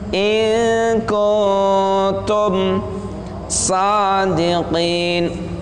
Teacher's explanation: Nun mati bertemu kaf, ikhfa, samar-samar.